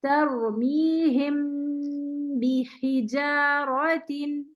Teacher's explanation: दो हरकत. ठीक है, दो हरकत का तवील गुन्ना करेंगे